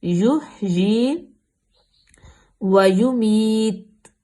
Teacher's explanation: یا کے نیچے کھڑی زیر ہے، اس کو لمبا کریں گے 2 حرکت کے برابر۔ یحیی ویمیت، تا پہ ہم وقف کریں گے تو پیش ختم کر دیں گے۔